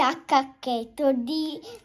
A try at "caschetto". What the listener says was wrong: A caschetto, non a cacchetto. Caschetto, con la... Caschetto.